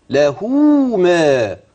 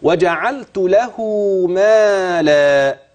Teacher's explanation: وصلت الهاء بحرف مد من جنس الحركه اللي عليها ايه الحركه اللي عليها ضمه جبت انا حرف مد طبيعي ايه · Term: صله